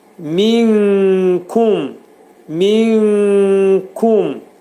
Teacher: İxayi kubra olacaq. Üç saniyə müddətində nunun üçdə bir hissəsi kəfin məxrəcində gizlədiləcək. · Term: ixva